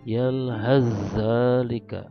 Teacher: bacanya seolah-olah sa-nya tidak ada, langsung ke zal ditasdidkan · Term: idgham mutaqaribain